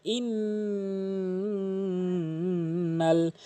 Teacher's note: ইন পড়া যাবে না ইং পড়তে হবে গুন্না করতে হবে